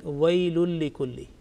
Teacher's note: Now the next word is with likulli, lam mushaddad, and joining together the first word wailun and likulli, and when we join together, then there is absolutely no nasal sound, and we pronounce like wailul likulli.